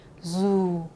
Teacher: 요거는 이제 북쪽에서는 지읒 발음입니다. 북쪽에서는 뭐다? 지읒 발음이에요. 그리고 우리말의 지읒보다 좀 가볍습니다. 이렇게 읽어요. zu.